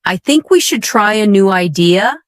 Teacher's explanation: One of the biggest mistakes learners make is something called rising intonation. This means your voice goes up at the end of the sentence as if you're asking a question even when you're not.